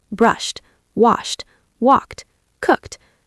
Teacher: These regular verbs are so important because most verbs in English follow this pattern. But that t sound at the end can be difficult. It's like a little puff of air.